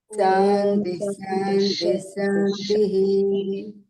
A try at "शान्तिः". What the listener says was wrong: సా అనకూడదండి, షా అనాలి. విసర్గ వచ్చిన తర్వాత ఇంకొక షకారం పలకాలి. ఓం శాంతిష్ శాంతిష్.